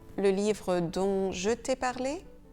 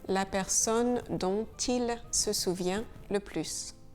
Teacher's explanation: Le T de don, il est silencieux devant une consonne.